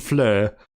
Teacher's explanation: in the case of fleur you have to end with like a slight g sound